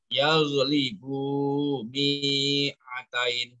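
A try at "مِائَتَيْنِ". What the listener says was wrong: mi'atain minya pendek yaghlibu mi'atain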